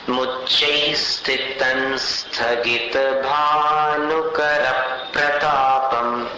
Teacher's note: मुच्चैस्थितं न बोलिएगा तो न के साथ में स्थगित का स आ जाएगा, तो उच्चारण एकदम सरल हो जाएगा।